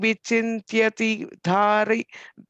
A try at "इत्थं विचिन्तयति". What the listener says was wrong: on the third line, like you're saying vichintyati. You're putting only a half ta there. It's a full ta. So ittam vichinthayati.